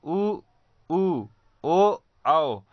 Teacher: जिस स्वर के उच्चारण करने में या बोलते समय हमारे ओठों की आकृति एक वृत्त के समान बन जाती है, उसे हम वृत्ताकार स्वर कहते हैं।